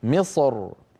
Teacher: حرف الاستعلاء الساكن كسره فبعض العرب كان اذا وقف على مصر يفخم الراء من اجل الصاد المستعليه قبلها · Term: التفخيم